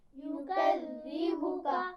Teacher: ذال پر شد ہے لیکن اس کی آواز میں سیٹی نہیں ہونی چاہیے، اس کا خیال رکھیے.